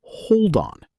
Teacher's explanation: a native speaker connects the final consonant D straight into the vowel O, pronouncing it physically as hold on. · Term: linking